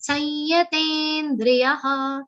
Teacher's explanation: the anuswar will be pronounced like a nasal y consonant